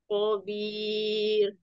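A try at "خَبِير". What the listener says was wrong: Kho-nya jadi lebih kotor lagi Kho, iya.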